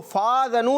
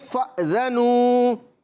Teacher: جھٹکا دیں گے حمزہ کے اندر